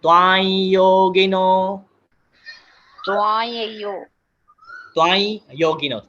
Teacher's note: ई की मात्रा नहीं आती है, सिर्फ नेजल साउंड है। ए आई होता है ना, आई, उसको नाक बंद करके बोलिए आई।